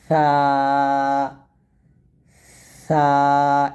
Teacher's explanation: আর সাটা নরম হবে পাতলা হবে বাতাস বের হবে